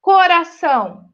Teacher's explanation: o são é a sílaba tônica